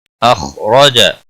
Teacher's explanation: خا حروف مستعلیہ میں سے پر پڑا جائے گا، اس کو ہلانا نہیں. را زبر کی وجہ سے پر پڑا جائے گا، جیم کے اوپر زبر ہے اس لیے اس کو کھینچنا نہیں.